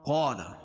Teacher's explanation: الف سے پہلے زبر ہو تو الف مدہ ہوتا ہے، اس کو ایک الف کے برابر کھینچ کے پڑھیں گے اور قاف کو موٹا پڑھیں گے۔